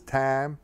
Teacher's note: Spanish speakers are picking up the southern vowel of I, so the time is pronounced as tam